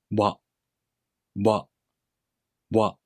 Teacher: The tip of the tongue lightly touches the gum ridge behind the bottom teeth. The middle back part of the tongue is raised towards the soft palate. · For the W sound, you make the tongue position of the U vowel. · The place of articulation for this sound is the soft palate. The tip of the tongue lightly touches the gum ridge behind the bottom teeth. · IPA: [ɰa]